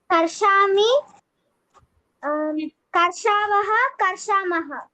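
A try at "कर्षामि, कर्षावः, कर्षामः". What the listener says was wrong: Uttamam.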